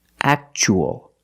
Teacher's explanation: we see TUA as a second syllable. So the T is pronounced ch